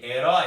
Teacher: herói é um ditongo aberto